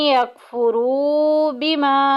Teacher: यकफुरू में देखे वाव साकिन पीछे पेश, वाव मद्दा का कायदा जारी हो रहा है, एक अलिफ के बराबर लंबा करेंगे